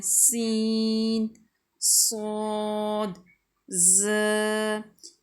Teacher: इनको हरूफ़ सफ़ीरिया इसलिए कहते हैं कि इनको पढ़ने से सीटी जैसी आवाज़ पैदा होती है। इनको बड़ा ऐसे दबा के और आवाज़ सीटी जैसी आवाज़ निकाल के पढ़ा जाता है।